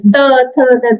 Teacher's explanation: त थ द दंतव्य होते हैं, इसको दांत, जीभ को दांत से टच करने पर निकल रहा है